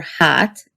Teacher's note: A as in al or hat is pretty close to a as in dog or father. The Hungarian version a is a little more forward in your mouth than the American ah. So your tongue is a little more towards the front of your mouth, about halfway towards the American a vowel.